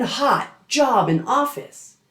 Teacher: Short O is the ah in hot, job, and office.